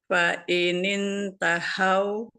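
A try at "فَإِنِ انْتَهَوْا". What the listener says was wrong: Nah, tahau masih ya, masih seperti masih kayak tahau karena kalau yang ha ini ha yang tengah itu lebih halus. Kalau yang ha besarnya lebih apa namanya, lebih ini ya, lebih kuat gitu. Tahau makhrajnya beda suaranya. Keluarnya soalnya kan beda ya.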